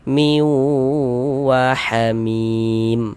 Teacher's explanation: Cara membacanya diidghamkan. Jadi bunyi tanwinnya ini dimasukkan ke huruf waw, melebur ke huruf waw. Kita baca miu, kemudian di bagian miunya itu suaranya itu kita tahan, kita panjangkan sejenak sepanjang 2 harokat. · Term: idgham bi gunnah